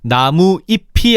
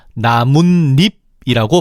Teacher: 사이소리 즉 니은니은을 첨가시켜서 나무잎이 아니라 나뭇잎이라고 발음하는 거지